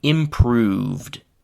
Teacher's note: It is that oo and v and duh are all voiced. So there is no alternating between voiced and voiced.